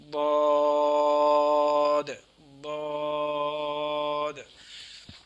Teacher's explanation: زبان کی کروٹ اور اوپر کے داڑھوں کی جڑ سے ادا ہوتا ہے۔ جیسے زبان کی کروٹ اٹھائیں گے، ایسے زبان کو کروٹ بنا کے اٹھائیں گے تو اوپر والی جو داڑھیں ہیں ساری ان داڑھوں کے اوپر لگا کے یہ حرف کو ادا کیا جائے گا۔